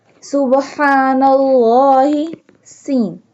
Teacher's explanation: سین کو سیٹی کی آواز سے ادا کریں گے۔ سین ادا کرتے ہوئے سیٹی کی آواز آنی چاہیے۔